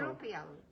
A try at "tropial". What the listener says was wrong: it's a tropea. You don't pronounce the L.